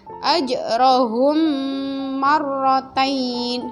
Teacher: mim mati atau mim sukun bertemu dengan mim, bacanya juga didengungkan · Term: idgham mimi